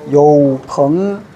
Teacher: 앞에 삼성은 반삼성으로 발음해 주는 거예요.